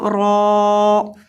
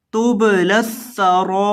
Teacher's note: را کو لمبا کریں گے کیونکہ اس کے بعد الف مدہ ہے